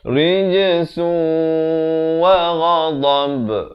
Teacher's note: Rij adalah lantunan khawkhalah di sini. Rijsun, tapi bila datang waw terus masuk beserta dengung. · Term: idgham bi gunnah